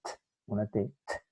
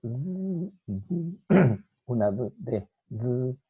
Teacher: Y la T sorda intervocálica, igual que acá arriba, sorda intervocálica sonoriza en la consonante D. La D es la sonora. Sonora, cuando la articulamos, las cuerdas vocales vibran.